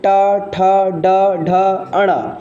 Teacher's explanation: इसके बाद मूर्धा का मूर्धा से उच्चारण होता है ट वर्ग का